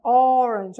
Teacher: olha o som O, bem fechadinho